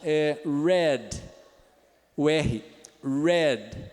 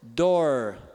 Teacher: Ele é um alveolar retroflexo. A pontinha da língua dobra para trás.